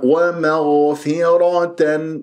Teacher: يجري فيها الصوت لا يجري فيها النفس حتى لا تصير عندك كانه خاء